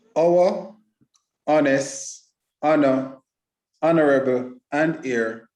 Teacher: should not be pronounced with an H